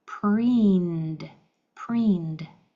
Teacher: Your ED is going to say D because this is a voiced sound. Your vocal cords are used. You can feel that on the N.